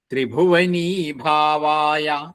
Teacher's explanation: ഭൂ എന്നുള്ളത് ഘോഷാണ്. ത്രിഭുവനീ ഭാ എന്നുള്ളതും ഘോഷാണ്